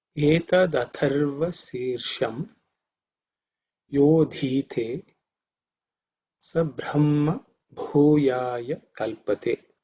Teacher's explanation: the tha is the second letter in the tha varga, so it's aspirated. Mahaprana, so you have to give extra air.